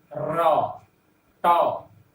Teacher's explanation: रेट्रोफ्लेक्स मैंने गंड मुड़ जाना, जीभ पीछे की ओर मुड़ती है और मूर्धा में स्पर्श करती है, और तब ट बोल पाते हैं